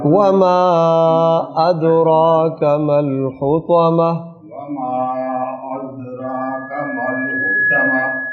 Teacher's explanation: جی، دال پر تھوڑا سا کلکلا اور خوبصورت کر دیں